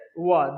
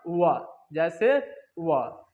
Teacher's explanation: अब आइए दंतोष्ठ, तो दांत और ओष्ठ से, दांत और ओष्ठ से जो वर्ण बोला जाता है उससे ही हम लोग क्या बोलते हैं, दंतोष्ठ बोलते हैं। दांत और ओष्ठ से जो वर्ण बोला जाता है उसे दंतोष्ठ कहते हैं।